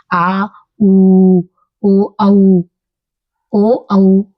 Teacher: अब आते हैं हम पीछे के भाग से, जुबान के हम आ, पीछे से मतलब कंठ से ये आवाज आ रही है